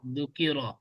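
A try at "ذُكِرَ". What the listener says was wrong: জালটা একটু নরম হবে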